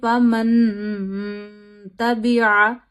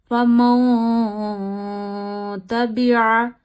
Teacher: नून साकिन की आवाज नाक में ले जाइए और छुपा लीजिए। एक अलिफ जितनी ठहराइए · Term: गुना